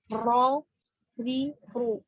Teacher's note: Untuk ro jadi kalau ro itu hampir sama ya posisinya dengan nun, namun memasukkan punggung lidah.